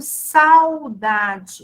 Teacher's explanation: veja que o A, ele é mais forte em relação ao U.